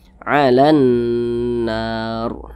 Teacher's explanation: Ini kita membaca Al-Quran berhenti tepat pada huruf ro tidak dibaca panjang, makanya kita sukunkan, kita matikan begitu. Kemudian huruf ro dibaca tebal, dibaca tafkhim.